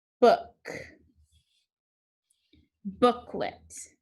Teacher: book is the accented syllable